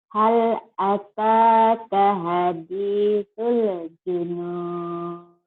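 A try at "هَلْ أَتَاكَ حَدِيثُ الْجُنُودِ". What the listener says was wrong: De, qalqalahnya mana Kak? Ini kan huruf qalqalah Kak. Ini huruf qalqalah Hal, hanya ada ya.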